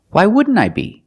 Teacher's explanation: You see the NT in wouldn't is between vowels, so you don't really hear the T.